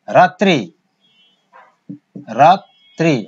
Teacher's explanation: দেখো রফলাযুক্ত যে ব্যঞ্জন সেটা কিন্তু দ্বিত্ব হচ্ছে।